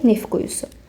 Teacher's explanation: Bu samit birləşmələrlə bitən sözlərdən sonra əgər samitlə başlayan söz və ya şəkilçi gələrsə, t samiti tələffüz zamanı düşür